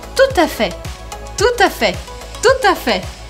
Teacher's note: São três palavrinhas, mas eu grudo a primeira com a segunda porque eu faço a liaison. E aí fica tout à fait.